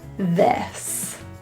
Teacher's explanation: For this word, we're going to pull our tongue a little lower from E to E. Feel your tongue go from high E to a little bit more of a flattened version. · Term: the I vowel